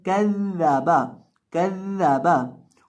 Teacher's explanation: पहली जाल साकिन होगी और दूसरी जाल के ऊपर हमने ज़बर पढ़नी है और जाल को हमने यहाँ सख्ती के साथ पढ़ना है, कज़्ज़बा, कज़्ज़बा।